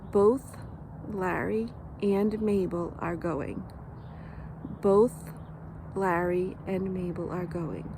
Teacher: when I'm not accentuating it, the L is up higher on my teeth. It's not between my teeth.